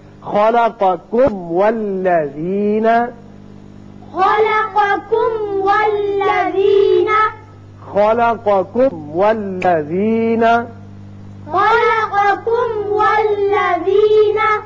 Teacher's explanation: میم کا اچھی طرح اظہار کیجئے، پھر واو پر ہونٹ کو گول کیجئے، اس لیے واو ادا ہوگا۔